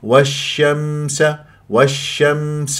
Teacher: الميم الساكنه البعض ماذا يعمل يقلقل وليست من حروف القلقله